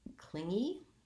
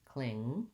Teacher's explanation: this word has the ng sound in the middle and the first syllable stress. So cling is long and e is short.